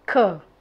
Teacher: sound made by pressing the back of the tongue against the soft part of the roof of your mouth